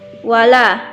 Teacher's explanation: Wala, la mad asli. Sebelum alif terdapat fathah, maka panjangnya satu alif dua harkat.